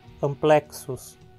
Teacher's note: Temos um X aqui. É uma letra só, mas ele é pronunciado como duas consoantes, K e S.